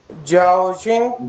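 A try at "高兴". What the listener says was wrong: जाओ नहीं, गाओ, गाफ अलीफ गा, गाओ शिंग।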